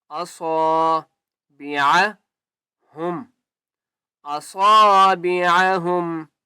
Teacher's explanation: یجعلون، اصا، الف ہے، ایک الف کی مقدار کھینچ کر پڑھیں گے اور صاد کو موٹا کر کے پڑھیں گے